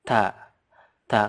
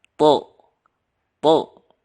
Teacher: ta itu tipis dan juga pecah. Ta. Ta. Kalau to itu lebih menggema.